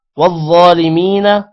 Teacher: ظا موٹا کریں گے, ظا کے اوپر کھڑی زبر ہے, لمبا بھی کریں گے